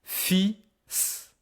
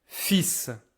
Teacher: There's no L sound. You don't hear the L.